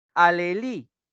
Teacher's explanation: En li está recayendo la mayor intensidad